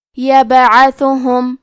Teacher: یہاں با کا حکم ہے قلقلہ، تو ہم یہ حرف کو ہلاتے ہوئے یہ کلمہ کو پڑھیں گے